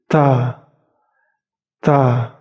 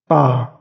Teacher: Sifatnya hams atau nafas dihembuskan sedikit.